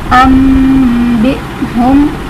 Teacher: حمزہ ساکنہ ہے جسے ہم جھٹکا دے کر پڑھیں گے. حمزہ ساکن کہیں بھی ہوگا اسے ہم ہمیشہ جھٹکا دے کر پڑھیں گے.